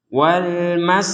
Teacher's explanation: Nah, ini huruf ta yang seperti ini, huruf ta yang bulat seperti ini. Ketika kita berhenti, maka ta ini menjadi ha. Wal maskanah, jadi bukan wal maskanat.